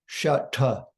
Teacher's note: we must take the tip of the tongue way back to touch the front of the hard palate at the top of the mouth. The da in Vardhanam is dental. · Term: cerebral